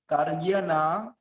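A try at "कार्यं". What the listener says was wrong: Okay, well, you didn't see the dot here, so you didn't pronounce it.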